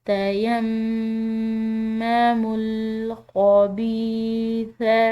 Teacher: اس کو دوبارہ سے پڑھیں گے، وَلَا تَيَمَّمُوا میم مشدد ہے، مشدد میم پر غنہ کریں گے